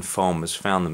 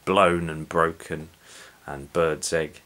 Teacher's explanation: The alliteration is important, because although the alliteration in the first line, farmers found them, is quite soft with the F sound, which is a fricative. The B sound, which is a plosive, is more abrupt and aggressive and violent.